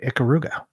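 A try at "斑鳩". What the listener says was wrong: It's pronounced Ikaruga. It's like an E, not an I.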